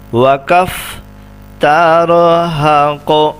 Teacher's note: قاف کے اوپر قلقلہ کریں گے وقف کی صورت میں، کیونکہ قاف حروف قلقلہ میں سے ہے